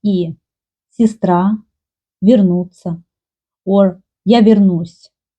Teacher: More often, Russian people pronounce и instead of ye, but not always. I also met situation when Russian people said ye, but there are a lot of people who say и, and also in Ukraine you can meet и instead of ye.